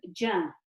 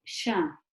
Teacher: Similar to ja, similar to sha. Okay, so those three letters, the jim, the sheen, and the ya, are pronounced from the middle of the tongue